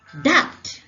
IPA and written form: dʌbd (dubbed)